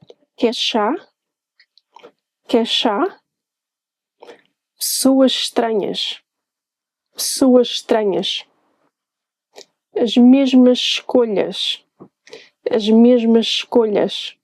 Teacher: It's very common for us to combine a word that ends in a sh sound with another that starts with the same sound, also a sh. This makes it extra hard for you to know when a word starts and another one begins.